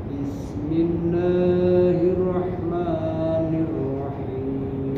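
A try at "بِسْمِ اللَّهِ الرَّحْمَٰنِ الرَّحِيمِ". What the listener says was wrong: Turunkan lagi Bismillahi, dua aja Pak. La itu kepanjang. Biasanya orang banyak kan lebih dari dua. Bismillahirrahmanirrahim. Jadi kalau dua rakaat tuh naik langsung turun, jangan naik gantung di atas baru turun. Itu terlalu lama. Kayak Bismillahirrahmanirrahim. Kepanjangan nggak? Bismillahirrahmanirrahim. Kepanjangan nggak? Terlalu panjang kan? Yang benar itu Bismillahirrahmanirrahim.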